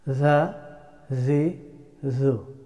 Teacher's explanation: Za, za, za, zal. The letter of zal pronounced from tip of the tongue and tip of the front two teeth.